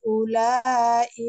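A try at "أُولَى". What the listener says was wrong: Nah, ulanya barusan ini kependekan. Ini dibaca panjang juga, Bu, alis.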